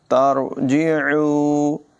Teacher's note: आइन की आवाज़ हलक़ के दरमियान वाले हिस्से से अदा होगी, इसको नुमायां करेंगे।